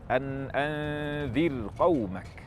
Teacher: saat kita membaca an anzir qaumak, ra dibaca tarqiq, bukan an anzir qaumak tafkhim